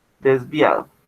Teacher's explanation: el acento se genera sobre la penúltima sílaba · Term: palabra grave